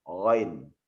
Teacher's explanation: Kalau ghain itu mutlak dia letaknya di tenggorokan, tidak ada permainan lidah di situ.